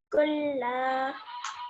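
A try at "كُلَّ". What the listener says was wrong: So not kulla, because that would make it longer than it needs to be. How long is fatha? 1 second.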